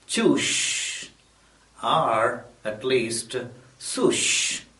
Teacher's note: Again, in the Indian context, most people have problems with the sibilants. They substitute sh with s and vice versa.